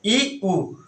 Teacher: बड़ा ऊ, ई ऊ, इस तरह से ई ऊ, तो बहुत कम मुंह खुला है, तो इन स्वरों को संवृत्त स्वर कहेंगे